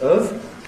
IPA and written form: əv (of)